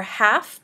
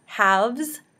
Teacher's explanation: We changed the unvoiced f into the voiced v before the plural suffix.